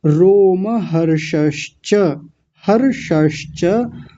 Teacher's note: पहले मूर्धन्य शकार आ गया, फिर तालव्य शकार आ गया आधा